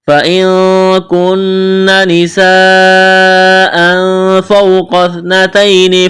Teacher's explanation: نون ساکن کے بعد کاف ہے، اخفا کریں گے۔